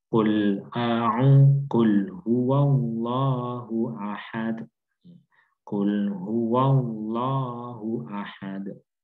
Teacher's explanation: Maka kita diupayakan untuk benar-benar menempatkan huruf qaf ini di tenggorokan, di pangkal, ya, pangkal lidah kita.